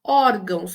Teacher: quando eu falo pausadamente, a pronúncia é de Z, por mais que eu escreva com S